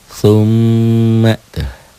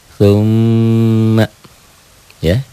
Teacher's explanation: M-nya, mimnya bertasdid. Summa, ya, ditahan, double dan dengung. · Kemudian selain double, selain dibacanya dibaca 2, dibaca ganda, nun dan mim bertasdid ini juga dibaca dengung ke hidung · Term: gunnah